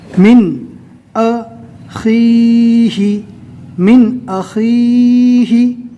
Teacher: نون ساکن کے بعد اظہار کے 6 حروف میں سے حمزہ آ گیا، لہٰذا نون ساکن کو ظاہر کر کے پڑھیں گے